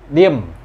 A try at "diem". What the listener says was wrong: Pakai E. Diem kau.